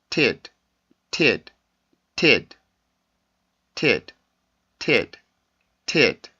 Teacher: 근데 D 발음의 위치를 보면 지금 종성, 즉 끝소리의 위치에 있죠. 이럴 때는 성대 울림이 터지지 않고요. 성대 울림을 뺀 공기만 터지게 돼요. 그래서 T 발음보다 조금 더 약한 소리가 됩니다.